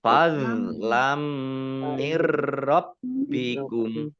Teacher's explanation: Fathah tanwin bertemu dengan huruf mim, bacaan idgham bi gunnah, masuk dengan mendengung, yaitu mendengung mim, ditandai mimnya ada tasdidnya. Mim tasdid dibaca gunnah atau mendengung ditahan kurang lebih 2 harokat.